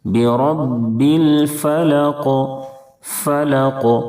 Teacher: اب قاف کی ادائیگی میں آواز لوٹے گی، کیونکہ قاف حروف قلقلہ کے 5 حرفوں میں سے ہے، اور وقف کرنے کی وجہ سے یہ ساکن بھی ہو جائے گا۔